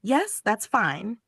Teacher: Said without any rise or fall. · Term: flat tone